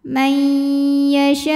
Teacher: Kemudian ada hukum idgham bi gunnah karena nun sukun menghadapi huruf ya, maka nun masuk ke ya disertai dengungan.